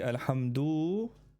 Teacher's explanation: lengthening the vowels so that he adds a W after the D in alhamdulillah doo as in a wow, he adds a wow.